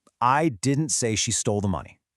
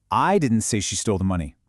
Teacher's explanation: Just by putting the stress on I, the meaning flips. It's not just a denial anymore.